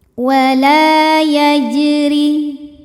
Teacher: Wala yajri, huruf ra dibunyikan secara tarqiq sebab ra berbaris di bawah yaitu baris kasrah. Maka dibunyikan ra-nya dengan tipis